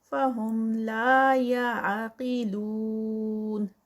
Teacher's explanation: لا پہ 2 کاؤنٹس، قاف ہیوی ہوگا اور نون پر 4 کاؤنٹس کا اسٹریچ. مد وہ مد ہے سٹاپ پر.